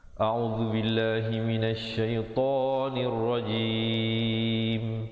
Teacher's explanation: Kemudian tonir, nun baris bawah terus naik di atas ra, rajim, dan ditutupkan rapat mulut menyempurnakan bunyi mim dengan kadar panjang 2, 4 atau 6 harakat